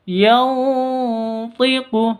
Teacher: Yantiqu, nun mati bertemu dengan to. Cara bacanya samar didengungkan, siap-siap ke huruf to-nya.